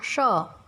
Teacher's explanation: जब श का उच्चारण करते हैं तब जीभ तालु का स्पर्श करती है और इस श को तालव्य स कहते हैं। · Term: तालव्य श